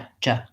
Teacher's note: We want to really have that pushed, stopped air that pushes out, J, J. I can't continue that sound. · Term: J sound